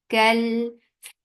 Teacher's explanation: Kel for fatha upon jaws attached with lam. Lam will get sifa of tawassut, and tawassut is medium flow of sound.